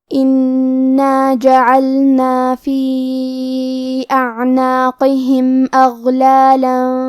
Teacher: کلمت انا میں حرف النون پہ تشدید ہے تو ہم 2 حرف کے برابر نون کو پڑھیں گے